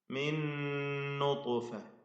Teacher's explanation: സാക്കിനാനൂനിന് ശേഷമുള്ള നൂനിൽ പൂർണ്ണമായും ലയിപ്പിച്ച് മണിക്കണം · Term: ഇദ്ഗാം ബിഗുന്ന കാമിൽ